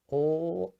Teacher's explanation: your tongue touches the teeth, ol, and then it pulls back